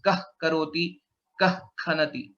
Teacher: if it is only kakara or kha, then it becomes kah karoti, kah khanati. That is a jihvamoliya sound that is pronounced.